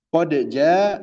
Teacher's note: Huruf dal dan jim itu mutaqaribain ya. Mutaqaribain. Dalnya ujung lidah, jimnya tengah lidah.